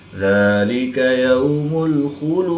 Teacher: ذال کے اوپر کھڑی زبر ہے تو اس کو ایک الف یعنی 2 حرکات کے برابر کھینچ کر پڑھیں گے. واو ساکن سے پہلے یا پر زبر ہے تو واو لین اس کو لمبا نہیں کریں گے. خا حرف مستعلیہ میں سے ہے تو اس کو پوری یعنی موٹا پڑھیں گے. · دال کو وقف کی حالت میں ساکن کریں گے. دال کی زیر کو وقف کی حالت میں ساکن کریں گے تو یہاں پر وقف کی حالت میں قلقلہ صغریٰ کر کے پڑھیں گے